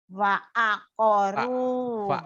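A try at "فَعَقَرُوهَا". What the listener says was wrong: Bukan wa, fanta F. Fa'aqaruha.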